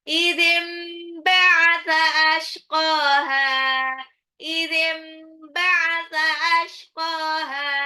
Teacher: Nun sukun ketemu ba, ini adalah iklab ya. Idzim, jadi bukan baca nun tapi mim. Ashqaha, ingat itu shin, bukan sin.